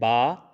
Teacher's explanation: Complete तौर पर आपका ये दोनों होंठ आपस में मिल रहे हैं।